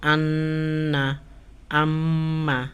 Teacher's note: নাকের বাঁশি হইতে গুন্না উচ্চারিত হয়